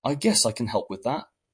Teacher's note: with a rising pitch at the end